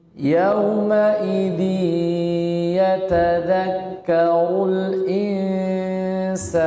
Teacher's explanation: Tapi masukkan disertai dengan gunnah. Yauma idzi masuk rongga hidung. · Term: idgham bi gunnah